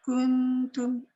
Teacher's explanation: Muncung itu hanya untuk kaf berbaris depan. Masuk nun dah tak boleh muncung.